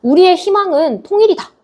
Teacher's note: 자음을 첫 소리로 가지고 있는 의는 이로 발음하더라